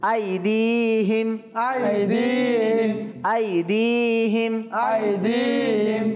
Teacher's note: আলিফ মাদ্দা ইয়া মাদ্দা এক আলিফ অর্থাৎ দুই হারাকাত সমপরিমাণ টেনে পড়তে হয়